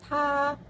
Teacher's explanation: konsonan letupan, apikoalveolar, tak bersuara, beraspirasi